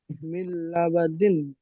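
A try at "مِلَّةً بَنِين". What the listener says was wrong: নিন নিন, দিন নয়, মিল্লাবানিন। ইজরা করেন।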